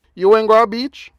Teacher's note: it's no different from the sentence meaning you went to the beach except that it has rising intonation